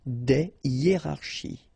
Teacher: you don't make the liaison between the two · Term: H, aspiré